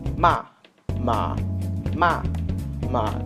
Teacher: the first one has an upper tone to it, and then the last one has like a lower tone to it